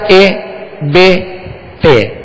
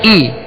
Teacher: حمزہ زیر اے یہ نہیں ہے، حمزہ زیر ای، زیر کی آواز کو گرا کر ای، کھینچیں گے بھی نہیں